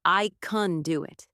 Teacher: The word can in positive sentences becomes kun. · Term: schwa sound